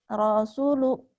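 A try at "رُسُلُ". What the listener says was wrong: rusulu, nggak ada yang panjang, rusulu.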